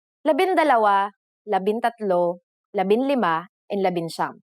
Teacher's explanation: For the letters D, L, R, S, and T, the G from NG is dropped to make it easier to pronounce.